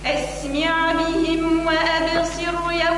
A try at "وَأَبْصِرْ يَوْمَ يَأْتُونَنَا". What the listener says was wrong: وأبصر يوم يأتوننا رق الراء وأبصر